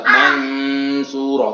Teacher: bunyi dengung atau bunyi gunah akibat adanya suatu huruf yang dibaca ikhfa. Ini gunah makhfi ya, atau gunah karena adanya dampak dari bacaan ikhfa.